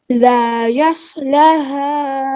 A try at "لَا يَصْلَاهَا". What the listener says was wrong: نہیں نو نو نو، لا یس، لا شروع میں بھی لا ہے، یس کے بعد پھر لا ہے، لا یس لا، بولو لا یس لا